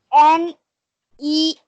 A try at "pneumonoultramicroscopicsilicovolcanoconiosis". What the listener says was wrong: Pronounce. Letter படிக்க சொல்ல. Pronounce full-ஆ படிங்க அத. Pneumono ultra microscopic silico volcano conasis.